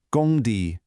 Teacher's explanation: First tone gong, second tone di